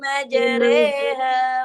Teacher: memiringkan fathah kepada kasrah atau memiringkan alif kepada ya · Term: imalah